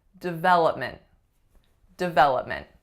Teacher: what is the strongest syllable its syllable number two